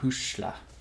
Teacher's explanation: the S is next to an I, and so in Irish, that makes that SH sound